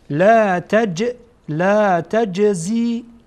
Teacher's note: جیم از حروف قلقله هست، قطب جد، قاف تا ب جیم دال، هرگاهی که اینها ساکن باشن با حرکت خوانده میشه، با تکان